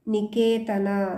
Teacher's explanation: ಇಲ್ಲಿ ಕೆ ಮುಂದೆ ದೀರ್ಘ ದೀರ್ಘಾಕಾರವಾಗಿ ಪ್ರೊನೌನ್ಸ್ ಮಾಡ್ತೇವೆ